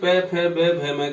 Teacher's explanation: आप बिना होठ बंद किए प फ ब भ म का उच्चारण नहीं कर सकते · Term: प वर्ग ओष्ठ